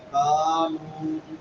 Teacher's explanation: الف مدہ اور واو مدہ دونوں ایک الف کے برابر لمبے ہوں گے